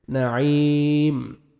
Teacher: عین کو اپنے صحیح مخرج سے ادا کریں گے تاکہ حمزہ میں مد ساؤنڈ مکس نہ ہو۔ نعی یا مد ہے، 1 سیکنڈ عین کو کھینچنا بھی ہے، لاسٹ میں میم ساکن ہو جائے گا جب سٹاپ کریں گے۔